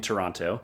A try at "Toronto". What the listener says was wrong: that's how we can tell if you're uh a tourist is by pronouncing the second T so it's actually go silent it's it's a silent T Toronto